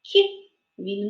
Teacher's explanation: перший звук у слові кіт кіт він м'якенький